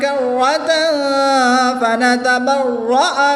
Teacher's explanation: تنوین کے بعد فا حروف اخفا میں سے ہے تو یہاں پر اخفا کر کے پڑھیں گے، غنہ زبانی کریں گے